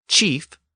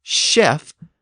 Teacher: that CH sound continued to evolve within standard French, and it later became an SH sound.